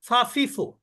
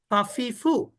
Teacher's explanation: নিচের ঠোঁট উপরের দাঁতের সঙ্গে স্পর্শ করে